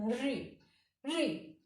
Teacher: री बोलते समय जीभ ऊपर की तरफ मूर्धा को छूती है, इसलिए मूर्धन्य से होता है।